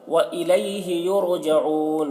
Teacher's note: रा को पुर पढ़ेंगे क्योंकि रा साकिना से पहले पेश है। जऊन यहाँ पर वक्फ़ करेंगे तो मद्द आरिज़ वक्फ़ी होगा।